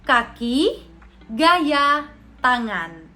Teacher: Dorso berarti lidah bagian belakang sebagai artikulator aktif dan juga velar, langit-langit lunak sebagai artikulator pasif. Jadi bunyi yang dihasilkan seperti ke, ge, dan eng. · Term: konsonan dorsovelar